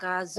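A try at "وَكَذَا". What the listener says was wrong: wa. bukan fa, wa. Wa.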